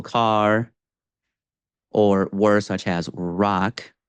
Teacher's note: But basically, just to reiterate a lot of the advice out there, R is a sound that in English does not require a contact between the tongue and other articulators in your mouth. The tongue pulls back and bunches in the middle. So car or words such as rock, especially in an initial position, you really get that retroflex tongue movement. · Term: American R sound